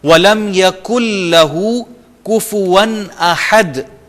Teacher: نون کو ہم even پروناؤنس بھی نہیں کریں گے، ادا بھی نہیں کریں گے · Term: مدغم